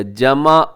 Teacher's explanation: اب اس میں آپ نے عین کا خیال رکھنا ہے، عین کو حمزہ کی طرح نہ پڑھیے گا، جمع، یہ بہت غلطی ہے، بہت بڑی غلطی ہے۔